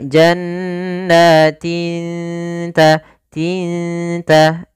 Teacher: Ta makhrajnya adalah ujung lidah kita menempel dengan gusi atas atau di perbatasan antara gusi dengan gigi seri atas itu.